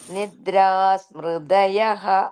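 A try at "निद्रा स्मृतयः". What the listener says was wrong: Don't forget the sa after nidra. That means nidraha. Nidraha.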